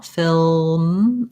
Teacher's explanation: just lifting your tongue in the front for the l film and then you just finish off closing the lips to get that m sound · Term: lm combination